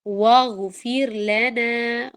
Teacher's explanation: غین موٹا ہے، واغ اور فیر میں اسمائلی فیس کے ساتھ آپ فیر بولیں گے، واغفر نہیں بولیں گے.